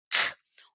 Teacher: sai bastante ventinho não faz tanta força aqui no meu pescoço · minha campainha a minha úvula é chamado de véu palatino então eu bato a minha língua lá atrás na garganta nesse véu palatino · a língua bate lá atrás na garganta e olha lá explode também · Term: velar